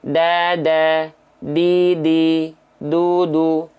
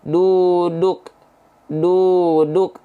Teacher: nah jadi huruf Dal itu ujung lidahnya nempel ke Pangkal gigi Sari atas kita punya gigi Sari atas kita punya bagian pangkalnya atau gusi